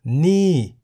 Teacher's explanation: ni in the falling tone meaning this